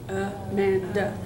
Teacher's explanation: it starts with a schwa. Actually, it starts and ends with a schwa. That's fun.